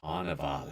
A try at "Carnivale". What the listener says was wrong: No, it is pronounced Carnivale because it's got that extra E on the end.